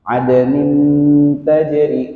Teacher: di sini ada nun sukun bertemu dengan huruf ta. Ini juga ikhfa yang tipis